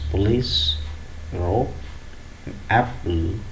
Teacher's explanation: in these three words police rope and apple the consonant sound p is not aspirated